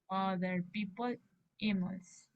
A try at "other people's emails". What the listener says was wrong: Tiene que ligarlo. Ok, people's emails está bien, pero desligó las anteriores.